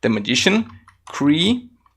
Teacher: Mas, como a gente tem depois aqui o ED, é muito comum, né, o T entre vogais ele ficar com esse som, né, do rareriroru, ou até mesmo um som de D quando você fala de forma mais suave